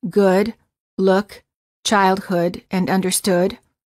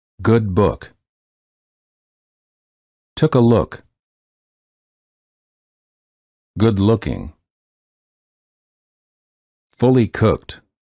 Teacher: the lips are very rounded and the tongue is relaxed the back of the tongue is raised and slightly higher than for the o the common spelling patterns for this sound are the double O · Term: uh as in good